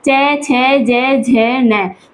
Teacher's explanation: तालु से हम बोलते हैं च वर्ग।